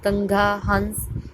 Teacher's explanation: अनुस्वार को हम जो है नाक से उच्चारित करते हैं, इसका उच्चारण हम नाक से करते हैं।